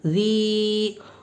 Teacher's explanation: ہمزۃ اللمزۃ اللہ، یا ساکن سے پہلے زیر ہے، یا مدہ ہوگی، اس لیے یا مدہ کو ایک الف کے برابر کھینچ کر پڑھیں گے